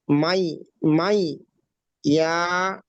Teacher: নুন সাকিনকে ইয়ার সাথে মিলিয়ে এক আলিফ পরিমাণ গুণনা করে পড়তে হবে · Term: ঈদগামে নাকিস